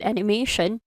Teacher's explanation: the may in animation is your most stressed word